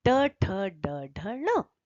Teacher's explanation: ड ढ ण यह भी निश्चित रूप से असंभव है क्योंकि ट ठट ण का उच्चारण स्थान मूर्धा है और मूर्धा का स्पर्श किए बिना उसका उच्चारण नहीं हो सकता